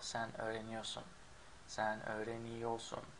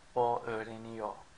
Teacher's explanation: in spoken language, we don't pronounce the R in ior in most cases, like for sen, the second one, sen öğreniyorsun is usually pronounced without the R. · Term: skip the R